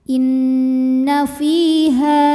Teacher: dengan mad thiiiri sebab ada ya sukun yang sebelumnya berbaris kasrah maka huruf Fa ini kita panjangkan dua harakat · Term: mad thobii